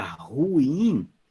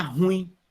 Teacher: Então, por exemplo, a gente fala aqui, em alguns lugares, a palavra ruim, você fala ruim, que é um termo oxítono. Então, a sílaba tônica é o in.